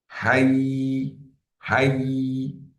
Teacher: You will find the middle of your tongue touched or try to touch the roof of your mouth.